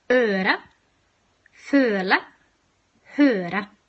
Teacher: It's an open mid, front, protruded vowel. So your tongue should be quite close to the roof of your mouth and quite far forward.